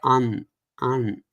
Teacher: So this is the jar sign, and it represents anshu, and it's anuswara, and anuswara is essentially pronounced as the definition of that is a post-vocalic nasalization, which means you say the consonant, you say the vowel, and then you have a nasal, release. So it will be just sound like an.